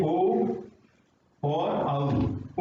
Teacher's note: औदौतो कंठोष्टम, कंठ और ओष्ठ है इसका